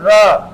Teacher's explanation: आप र को बोलकर देखेंगे तो अवश्य यहां पर आपकी जीवा में क्या होता है? वाइब्रेशन होता है। कंपन होता है। तो यह कहलाता है आपका प्रकंपित कंपन जात या लुंठित व्यंजन। · महसूस कीजिए आपकी जीवा में क्या हो रहा है? कंपन हो रहा है। वाइब्रेशन हो रहा है। · लुंठित व्यंजन। ऐसा व्यंजन जिसको उच्चारित करते समय, बोलते समय जीवा में कंपन होता है, कंपन होता है, प्रकंपन प्रकंपित होता है, या फिर कहीं लुंठित होता है, यानी कि आपकी भाषा में कहे तो वाइब्रेशन होता है।